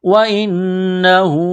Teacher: وَمِنْ حَيْثُ خَرَجْتَ فَوَلِّ وَجْهَكَ شَطْرَ الْمَسْجِدِ الْحَرَامِ وَإِنَّهُ لَلْحَقُّ مِنْ رَبِّكَ. نون مشدد ہے، غنہ کریں گے، آواز ناک میں چھپائیں گے